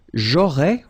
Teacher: final S not pronounced